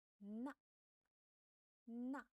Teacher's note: The initial of na is from nasal cavity. The final is and fourth tone.